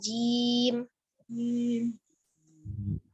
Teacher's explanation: Jim, bukan zim, tapi jim. Nah, tengah lidahnya ada di langit-langit atas